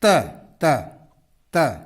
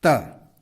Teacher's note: दांत और टंग का टिप आपस में स्पर्श करते हैं